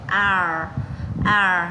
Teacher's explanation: Chữ này là chữ A dài, chúng ta sau đó chúng ta cong lưỡi chữ R lên.